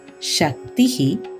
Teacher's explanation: when the consonant sound ku joins with the consonant sound ta it forms a new compound consonant sound